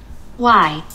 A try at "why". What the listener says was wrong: W는 U. H는 소리가. 흐 소리인데 흐 소리 힘이 없어서 안 나고 있어요. 그 소리. 그 다음에 Y는 E? 그러면 아니. V 되게? E가 아니고 I. 그래서 Why.